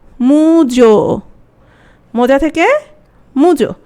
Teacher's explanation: মোটা হয়ে গেল উ, যাটা হয়ে গেল ও